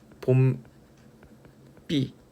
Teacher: 자, 얘가 발음이 봄비. 자, 요렇게 비읍이 쌍비읍 된소리로 교체된 현상으로서 사이소리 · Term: 교체로서의 사이소리